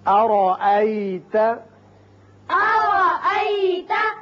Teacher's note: را کو اچھی طرح پر کریں گے